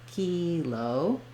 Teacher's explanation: When we use it by itself, we say that more like kilo with first syllable stress, and we say the tense E